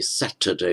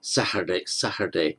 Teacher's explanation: In Ireland, you tend to hear a pronunciation like Saturday, where the T is lenited. So the verb is to lenite, in other words, softened.